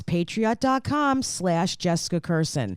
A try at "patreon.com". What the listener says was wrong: I think you said patriot.com.